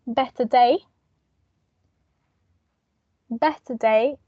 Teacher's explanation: we pronounce bet bet day and we don't add an R here because the following sound it's a consonant